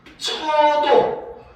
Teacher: 이중모음인 여가 단모음인 어로 변한 거죠. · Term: 반모음 탈락